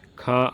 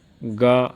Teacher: ख महाप्राण अघोष है गा अल्पप्राण घोष है